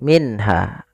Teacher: di sini izhar halqi minha ada dua ee apa namanya ada nun sukun bertemu dengan huruf ha suara nunnya harus dibaca dengan jelas tidak boleh ditahan